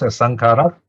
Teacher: vowel is short some is added in for easier pronunciation so you got to pronounce asankara and there's a glottal stop